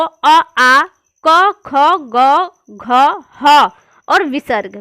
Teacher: कंठ और जीभ के निचले भाग से निकलते हैं